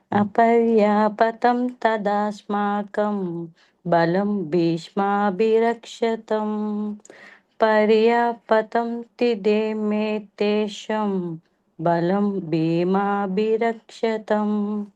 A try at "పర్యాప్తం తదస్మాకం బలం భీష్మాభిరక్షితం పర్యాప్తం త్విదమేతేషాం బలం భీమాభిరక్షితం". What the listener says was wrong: హా, అది ఒత్తులు కొద్దిగా చూసుకోండి మాతాజీ.